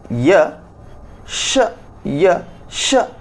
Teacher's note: ಇವೆಲ್ಲವೂ ತಾಳುವಿನ ಸಹಾಯದಿಂದ ಜನ್ಮತಾಳುವಂತಹ ವರ್ಣಗಳು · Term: ತಾಲವ್ಯ